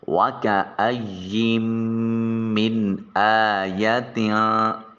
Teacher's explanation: حمزہ حرف اظہار ہے، لہٰذا من کے نون کو ظاہر کر کے پڑھیں گے۔ الف کے اوپر جو کھڑی زبر ہے اس کو الف المدیہ صغیرہ کا نام دیا جاتا ہے، اور اسے ایک الف کے قائم مقام لمبا کیا جاتا ہے۔ · تا کے نیچے جو 2 زیریں ہیں، ان کی ادائیگی کے وقت ایک نون کی آواز پیدا ہوگی جسے نون تنوین کہیں گے، اور نون تنوین کے بعد فا حرف اخفا ہے، لہٰذا اس نون کو اپنے مخرج میں چھپا کر ادا کریں گے۔